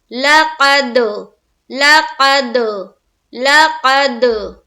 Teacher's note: لَقَدْ، خلق، لام زبر لا، قاف دال زبر قد، دال کے اوپر سکون ہے، اور دال حروف قلقلہ میں سے ہے، تو جب ہم قاف کو دال سے ملائیں گے تو کریں گے ہم قلقلہ۔